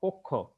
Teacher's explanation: এখানে ক এর সাথে যে অ আছে সেটা ওকার হয়ে গেছে